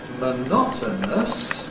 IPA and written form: məˈnɒtənəs (monotonous)